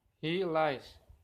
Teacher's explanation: Clear L initial in lies.